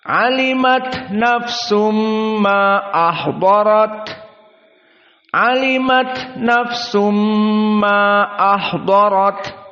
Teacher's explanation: Mad Jaiz almunfasil berapa dibaca Dua harakat saja